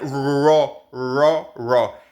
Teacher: En inglés, acuérdense, la R se hace con la lengua hacia atrás.